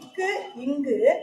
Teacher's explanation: இக்கு இங்கு ஆகிய இரு மெய்களும் நாவின் முதல் பகுதி அன்னத்தின் அடிப்பகுதியை பொருந்துவதால் பிறக்கிறது